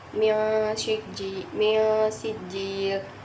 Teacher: ifa hakiki karena nun mati bertemu dengan sin, dibaca samar dengan dengung, ditahan sepanjang 3 harokat